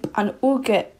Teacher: it sounds like a G, but it's actually a very light K. Basically, what he's trying to say is you do not say an-uke.